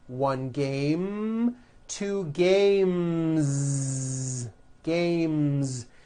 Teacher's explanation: the last sound you hear in the word game is the m sound m M which is a voiced consonant so because of that when you add an S the S